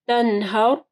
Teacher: تَنْهَرْ را موٹی پڑی جائے گی، را ساکن سے پہلے ہا کے اوپر زبر ہے۔